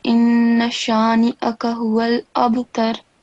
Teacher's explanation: pronounce the noon with the kasra and the hamza with fatha properly and separately so that people can hear two distinct sounds